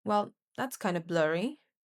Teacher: So the fall rise creates that knowing, playful tone.